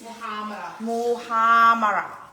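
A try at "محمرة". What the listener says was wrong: No, you're pronouncing it R. Muhammad. It's Muhammad.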